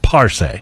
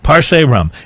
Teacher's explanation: It's Parce, emphasis on the first syllable.